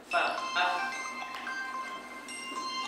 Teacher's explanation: Jadi dia asalnya gigi atas kena bibir bawah, itu af.